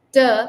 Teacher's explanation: pronounce like this only yeah that's what we think T is when you say t your tongue is rolled a little back